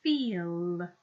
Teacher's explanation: there's that dark L because it's following the vowel sound